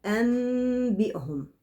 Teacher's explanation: قلبت النون الساكنة إلى ميم ساكنة، ثم تلامست الشفتين بخفة بدون كز. أنبي، كأن الميم بتتنطق باستحياء بغنة.